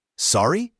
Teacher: You say it with a rising intonation to show you didn't hear or understand.